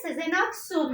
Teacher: işte burada da ulama gerçekleşir bakın sezenaksu hızlı bir şekilde söyle sezenaksu naksu diye çıkıyor ağzımdan burada ulama gerçekleşir